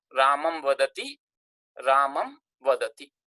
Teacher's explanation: Final makara, when followed by a consonant, is changed into anuswara.